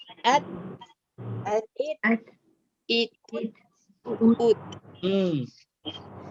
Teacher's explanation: Ada hamas sedikit. Setelah menekan huruf ta mati, at ada hamas di belakangnya.